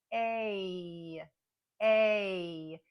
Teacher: long a is a combination of sounds It's a combination of a e and there's even a little Y sound at the end